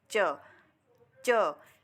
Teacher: ठीक है, अभी हमारी जो तीसरा हमारा भेद है वह स्पर्श और संघर्ष, दोनों भेदों को जोड़कर बनाया गया है स्पर्श संघर्षी व्यंजन